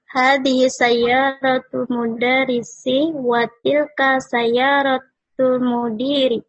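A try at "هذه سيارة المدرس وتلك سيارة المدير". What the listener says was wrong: Sahih. Terus.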